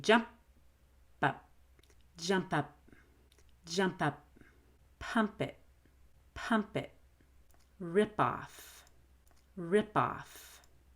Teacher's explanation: p or k and the next word begins with a vowel you'll want to hold the p and release a b sound that connects to the vowel